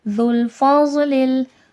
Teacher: ذال نرمی کے ساتھ، ضاد موٹا کر کے